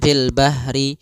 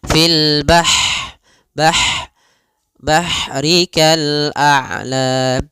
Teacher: Ha, sifat ha di sini hati-hati jangan dibaca dengan ha besar, jangan fil bahri, tapi dia ha pedas, lembut, dan juga dia punya sifat hamas, mengalirnya nafas.